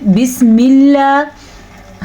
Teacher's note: अगर लफ्ज़ अल्लाह से पिछले वाले हर्फ के नीचे ज़ेर होगी तो लफ्ज़ अल्लाह बारीक पढ़ा जाएगा